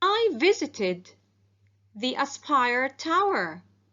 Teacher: the ed ending sounds id because the verb visit ends in t sound